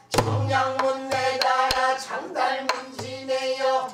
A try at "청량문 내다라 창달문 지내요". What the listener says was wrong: 청에도 강이 있고 창달문 지내요 할 때 창에도 강이 있어야 돼 그렇지 않으면 완전 글리는 소리야 청량문 내다라 창달문 지내요